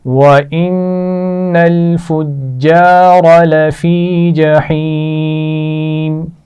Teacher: فُجَّارَ جیم پر شد ہے تو سختی سے پڑھ جائے گا اور را کو موٹا پڑھیں گے